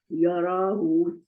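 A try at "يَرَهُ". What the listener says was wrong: नहीं याराहू नहीं, रा के आगे अलिफ नहीं है खींचने के लिए। रा लंबा, रा जो है लंबा नहीं है, मोटा है।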